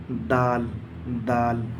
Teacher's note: दाल का मखरज है जबान की नोक और ऊपर के सामने वाले दांतों की जड़।